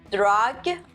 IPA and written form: drʌɡ (Drug)